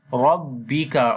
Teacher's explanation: So we make izhar shafawi here. Rabbika, on the ba we make again strong voice, and ra we read in heavy sound due to fatha sign on it